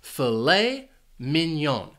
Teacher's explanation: This food is actually 2 words, and the stress is on the second syllable for each word.